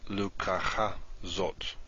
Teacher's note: on the first word, the accent falls at the end.